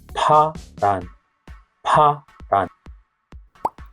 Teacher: Try to hold in your hands in front of your mouth and you should feel a strong puff when you pronounce 파란. · you gotta close your lips and build up pressure and then release it with a strong puff of air. Like a small explosion. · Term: breathy one